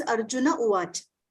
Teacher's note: Plus Visarga, then U is a vowel. So the Visarga disappears.